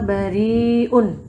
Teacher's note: dibaca panjang 5-6 harokat ya ini. Namanya mad wajib muttasil.